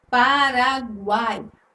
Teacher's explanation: Se você for separar as sílabas dessa palavra, né, desse nome, Paraguai, você vai ter junto aí a letra G, que é a consoante, Paraguai. Você vai ter a semivogal U, a vogal A e a semivogal I. Neste caso aqui, essas três letrinhas, semivogal, vogal e semivogal, elas são pronunciadas. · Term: tritongo